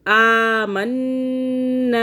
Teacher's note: آمنا، آ کو بھی کھینچوں گی، نا کو بھی کھینچوں گی